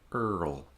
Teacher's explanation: So for the R, there's no contact, and then for the L, there is contact.